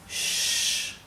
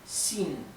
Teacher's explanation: Me faltaba explicarles cómo se pronuncia la X en el pinyin. La X se pronuncia como una SH inglesa, así, shh, pero un poco más tendiendo a una S. Y en algunas partes de China directamente lo pronuncian como una S más suave, ¿sí?